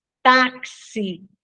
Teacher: O X, quando ele aparece com som de KS, táxi, né? Ó, na palavra táxi, o X tem som de KS, então, uma letra só que representa dois sons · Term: dífono